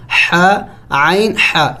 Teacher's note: یہ دونوں وسط حلق یعنی درمیانی حلق کے درمیانی حصے سے ادا کیے جائیں گے